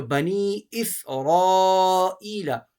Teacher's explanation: را کو آپ موٹا پڑھیں گے